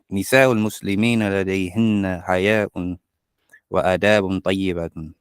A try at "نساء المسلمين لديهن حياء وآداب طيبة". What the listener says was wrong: طيبة. Make that tanween clear.